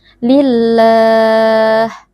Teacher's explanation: tanwin yang berjumpa dengan huruf lam ini merupakan bacaan Idgham Bil tanwinnya kita leburkan ke dalam huruf lam sehingga huruf lam menjadi seperti Huruf yang bertasdid kemudian dibaca tanpa berdengung